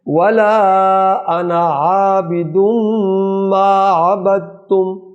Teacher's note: دال اور تا یہ وہ ادغام ہوگا، متجانسین، ان کا مخرج قریب قریب ہے، لہذا یہاں دال نہیں پڑھی جائے گی ، ما عبدتم، تا پڑھی جائے گی، دال نہیں پڑھی جائے